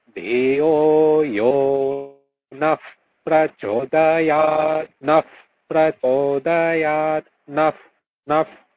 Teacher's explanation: বিসর্গের পর যখন প বা খ থাকে তখন এই বিসর্গের স্থানে উপধমানীয় হয়ে যায়, অর্থাৎ তখন হচ্ছে তার উচ্চারণটা হচ্ছে বিসর্গে এনে হচ্ছে হ এর উচ্চারণটা হয়, হ হসন্ত।